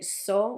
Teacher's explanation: If you say so, which is the way that some Spanish people would say tho, because they can't make the th sound as well, they would make so.